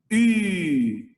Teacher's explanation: Il faut tirer le lèvre comme en disant un OU, mais on va produire un son comme le I. U, bouche d'un OU, mais le son, on va prononcer un I. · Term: voyelle U